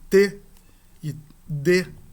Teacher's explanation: nos dois casos, as a ponta da língua toca os dentes superiores